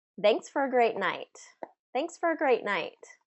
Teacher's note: for is frequently reduced to fur